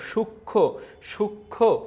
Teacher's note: যুক্ত ব্যঞ্জন বর্ণের সঙ্গে সংযুক্ত মফলার কোনো উচ্চারণ হয় না